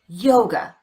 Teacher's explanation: The second syllable is unstressed. We replace the letter A with the unstressed vowel, the sound, and we get away from that syllable as quickly as we can.